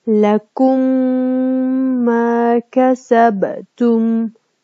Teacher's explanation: Бул жерде сүкүндүү мим харекелүү мимге жолугуп атат жана таштиттүү экөө биригип таштиттүү болуп жана гунналуу мурун боштугунан үн чыгарып жана 1,5 алиф өлчөмүндө тутулуп окуп жатат. Лакум ма касабтум.